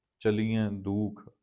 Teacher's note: ਬਹੁਵਚਨੀ ਕਿਰਿਆ ਹੈ, ਉਚਾਰਨ ਨਾਸਕੀ ਹੋਏਗਾ